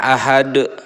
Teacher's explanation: ini ada huruf Dal di akhir kalimat yah namanya adalah qolqolah kubro · cara membacanya harus benar-benar jelas, besar dan tebal ya, memantul. Nah, cara membaca qalqalah adalah memantul. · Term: qalqalah kubro